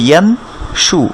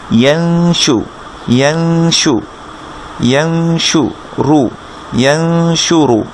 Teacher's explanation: নুন সাকিনের পরে যদি শিন আসে, এই যে তিনটা দাগের উপর তিনটা নুক্তা, তাহলে নুন সাকিনটাকে গোপন করে গুন্না করে পড়তে হয়। কেমন? এটা ছিল ইয়ান শু, কিন্তু আমরা পড়বো এখন ইয়াং শু, ইয়াং শু, ইয়াং শু রু, ইয়াং শু রু, ইয়াং শু রু। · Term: ইকফা